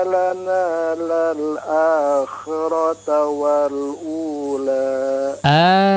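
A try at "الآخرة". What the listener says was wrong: akhirat. Ya, khi-nya kurang jelas ya. Tadi agak ke fathah sedikit ya.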